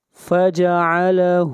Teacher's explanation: ہا کو کھینچ کر پڑھیں گے ایک الف کے برابر